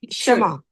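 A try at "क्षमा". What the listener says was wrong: Shama is wrong. Kshama is the correct way. You should not say Shama. It is Kshama.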